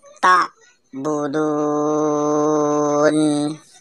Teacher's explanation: wau sukun didahului huruf berharakat dhammah dan bertemu di akhir kalimat cara membacanya dengan panjang selama dua sampai 6 harakat atau 2-6 detik